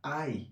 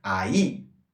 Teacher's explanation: Se o I tem acento, formou-se aí um hiato, logo vogais separadas.